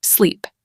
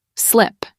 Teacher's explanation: In sleep and slip, did you notice the middle sound changes? In sleep, that e is longer, like stretching. But in slip, the e is quicker, sharper.